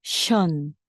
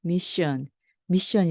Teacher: SION은요, 입술을 내미고 바람이 많이 나가는 션 발음이 됩니다